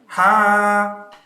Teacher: Nah, ha itu di sini bersih. Jangan kha, itu salah.